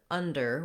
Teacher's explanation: we just have two syllables, and the first syllable is stressed. So that means we're going to have a long stressed schwa in this word, un, and you need to hold that for a longer time than the second syllable, der.